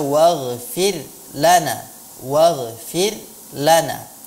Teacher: huruf ra di sini pada kalimat ini dilafalkan dengan tarqiq ya, muraqqaqah, ra muraqqaqah, tipis. Tapi jangan sampai ketipisannya itu menjadi dia tidak jelas, seolah-olah dibaca waghfir lana.